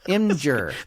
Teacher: there is no vowel between the M and the G